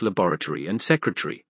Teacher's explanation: Secondary stress is normal on the penultimate syllables of words like laboratory and secretary, so that these words end like Tory and Terry.